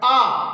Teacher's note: जब हम बड़ा आ का उच्चारण करते हैं तो हमारा मुंह क्या होता है? खुल जाता है, यानी खुला हुआ।